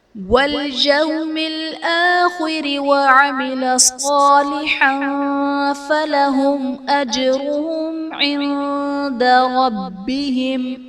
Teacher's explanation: فلهم اجرهم میں میم ساکن کے بعد حرف با اور میم کے علاوہ حمزہ آ رہا ہے تو یہاں پر اظہار شفوی کا قاعدہ ہوگا، یعنی میم ساکن میں ہم غنہ نہیں کریں گے۔ اجرہم میں جیم حرف قلقلہ ساکن ہے تو یہاں پر قلقلہ خوب ظاہر کریں گے۔ اجرہم عند میں میم ساکن کے بعد حرف با اور میم کے علاوہ عین ہے تو یہاں پر اظہار شفوی کا قاعدہ ہوگا، یعنی میم ساکن میں ہم غنہ نہیں کریں گے۔